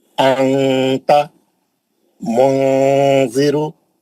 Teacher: मुंह खोल दिया। मुंह खोला जबान की नोक नीचे के दांतों में पकड़ लिया। नीचे के दांतों में लगा के जबान को टाइट कर दिया। ऊपर जाने नहीं दिया। उसको मखरज को टच होने नहीं दिया। आवाज को नाक में स्विच कर दिया। नाक में लेके चले गया। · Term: नून साकिन का इफा, इफा